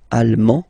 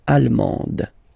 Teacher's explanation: you don't pronounce the final D, but then you pronounce it here for the feminine form